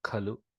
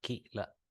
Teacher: Khalu is Mahaprana Khakara Lu Khalu, and Kila is both Alpaprana Kila.